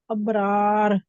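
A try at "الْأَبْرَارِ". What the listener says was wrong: अबरार। रार, रार तो ये दोनों ही बारीक रा है ना, ये जहां पे तो मोटी होनी चाहिए, दोनों ही जबर के साथ है।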